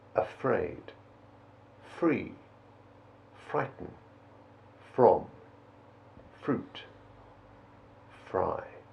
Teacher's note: As in the combination CR, the letter R wants to turn itself into a lazy W, but we mustn't let it